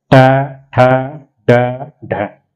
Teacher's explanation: हमारी जीभ जो है बोलते समय मुड़ती है हल्की सी, ट ठ ड ढ, तो ये क्या हो गया, मूर्धन्य।